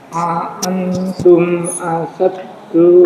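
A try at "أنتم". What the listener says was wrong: Antumnya dengung, Mbak. Antum. Anya dengung, terdengung. Antum gitu.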